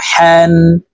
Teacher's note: হা হরফ হলকের মধ্যখান থেকে উচ্চারণ হবে